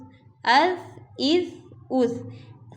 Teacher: سا کو نرمی سے پڑھیں گے، اس میں کوئی سیٹی نہیں کریں گے، کوئی اس کو موٹا نہیں پڑھا جائے گا، بلکہ ہم اس کو نرمی سے پڑھیں گے۔